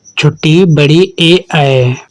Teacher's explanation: वे स्वर जिनके उच्चारण में जीभ या जिह्वा का आगे वाला भाग ऊपर उठता है कहलाते हैं अग्रस्वर। अग्रस्वर हैं छोटी बड़ी ए ऐ।